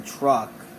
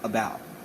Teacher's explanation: as in about these two sounds are basically the same except when you say truck you're clearly pronouncing it but when you say about you're saying it in a short lazier manner